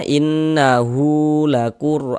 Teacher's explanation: Ditebalkan huruf rnya sehingga pangkal lidah kita naik terangkat ke atas ketika kita melafazkannya. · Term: tabkhim